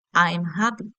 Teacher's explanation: And falling intonation for statements like, I'm happy.